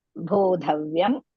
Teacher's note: So bodhavyam cha vikarmanaha. Bo dirgha, dha again mahaprana, vyam half va and yam bodhavyam.